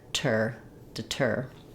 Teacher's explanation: it's an aspirated T and it functions just like the T at the start of a word so there should be a little puff of air